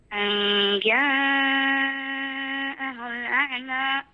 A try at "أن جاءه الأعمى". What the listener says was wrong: ضم الهاء شوية زيادة، ضم الهاء انتبهي للضم والكسر، حرك الفم فيها حتى تنضبط بشكل جيد. أن جاءه الأعمى.